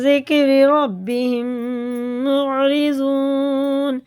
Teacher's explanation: یہ میم ساکن کے بعد میم ہے تو اسے غنہ کر کے پڑھیں گے، یہ ادغام شفی ہے